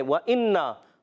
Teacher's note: حمزہ ویسے ہی تحقیق سے خوب ظاہر کر کے پڑھیں گے، نون مشدد غنہ کریں گے